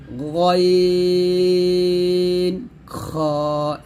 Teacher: হলকের শেষ থেকে অর্থাৎ এখান থেকে আপনারা গাইন এবং খ উচ্চারণ করবেন